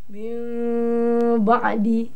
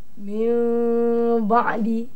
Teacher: Yang pertama, tukar nun kepada bunyi mim. Nun jadikan mim. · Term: iqlab